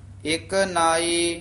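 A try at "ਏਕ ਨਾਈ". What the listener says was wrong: विश्राम ध्यान नाल लाउणा है, कीरत सूरत मुक्त इथे विश्राम है, एक नाई, एक नाई कठा नहीं कह देना, वखरा बोलना है, एक नाई, नाई भारा नहीं बोलना, नाई नहीं कहना है, पोला उच्चारण कर।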